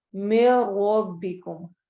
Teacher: रॉ इस रॉ को मोटा पढ़ेंगे क्योंकि इसके ऊपर फतहा आ रही है